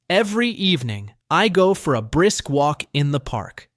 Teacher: Try to match the rising tone on evening and the gentle fall at the end of park